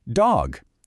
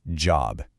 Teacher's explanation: For dog, the very tip of your tongue taps that ridge. But for job, it's more of the flat part of your tongue and it's positioned just a bit further back.